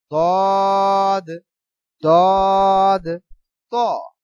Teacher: তদ চার আলিফ পরিমাণ লম্বা পড়তে হবে মোটা আওয়াজে